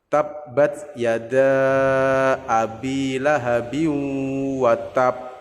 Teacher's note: Itu tetap dibaca qalqalah kubro, tapi sebelum memantulkan baknya itu kita tahan terlebih dahulu baknya.